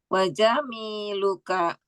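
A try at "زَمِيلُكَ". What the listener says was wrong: jangan jim. jangan pakai jim tapi Z. Z. Z Indonesia. Z. Zamil, teman.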